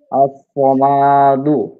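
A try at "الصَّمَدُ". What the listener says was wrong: সমাদে মিমে টান নেই তো কোনো। আস-সামাদু, আস-সামাদু, থামলে আস-সামাদ, থামলে আস-সামাদ।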